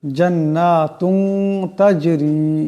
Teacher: এই তার উপরে যে দুই পেশের তনবিন এটাকে ইকফা করিয়া পড়তে হবে এক আলিফ পরিমাণ ইফার গুন্না হবে